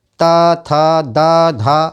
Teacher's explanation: त थ द ध, आप उच्चारण करके देखिए, इनका उच्चारण करने में आपकी जीभ जो है दांतों को स्पर्श करती है, तो इनका उच्चारण स्थान हो गया दांत।